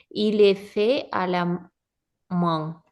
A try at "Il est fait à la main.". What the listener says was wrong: À la main. Très bien. Très bien.